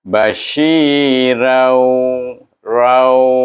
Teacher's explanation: mulut kita kan moncong sedikit untuk menyebut mahraj waw. Iaitu waw, dia punya bunyi memoncongkan mulut kita.